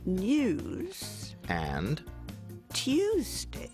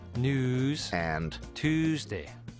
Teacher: For example, we used to say news and Tuesday. Now that Y sound is gone, and it's news and Tuesday.